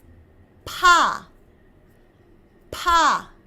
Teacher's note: it's very sharp and very breathy